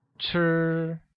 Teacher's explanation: Want translates to 要 and is pronounced with a falling tone, like 要, while eat translates as 吃. which uses a high level tone on I